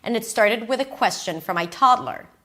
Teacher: Started. Question. Toddler. These are the three stressed words.